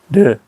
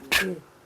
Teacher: 똑같은 발음 기관에서 나는데 하나는 성대를 울리고 하나는 성대를 울리지 않는 거지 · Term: 유성음